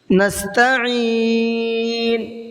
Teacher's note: عین کو تھوڑا سا حلق سے نکالنے کی کوشش کریے، کیونکہ یہ حمزہ پڑھا جاتا ہے، پھر اگر عین کی آواز نہیں نکلے گی تو پھر حمزہ کی نکلے گی اور اس سے اس کا مطلب بدل جاتا ہے۔